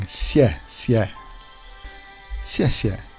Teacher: the tone on the e is downwards · the letter X is pronounced halfway between s and sh